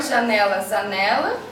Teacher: substituição do valor de traço anterior